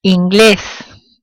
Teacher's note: The stress comes at the end of the word.